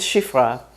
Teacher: if an Israeli pronounces it, it's going to be halfway between I and E. English doesn't have exactly this sound.